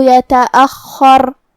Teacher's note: کلمت یتأخر میں حرف الخا ہے، خا کی ادائیگی حلق کے اوپر والے حصے سے ہے جو کہ اس پہ تشدید ہے، لہذا اس کا دھیان رہے.